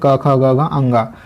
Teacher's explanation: क वर्ग सबसे पहला वर्ग है क वर्ग, उसका उच्चारण स्थान होता है कंठ कोमल तालु